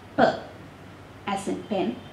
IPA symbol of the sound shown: p